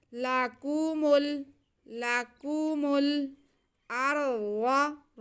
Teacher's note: खींचना किसी को नहीं है, बस मीम को हमने लाम के साथ मिला के पढ़ना है।